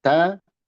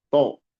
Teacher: Hendaklah diperhatikan tipisnya ta dan tebalnya to pada kalimat tatoli'u.